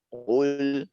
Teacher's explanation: pada saat qul di sini ada syarat kefasihan itu untuk memonyongkan lebih tinggi. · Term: isti'ala